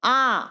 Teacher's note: আমাদের বেশি শ্বাসবায়ু লাগে, তাকে বলা হচ্ছে দীর্ঘস্বর। দীর্ঘ মানে লম্বা বা বেশি।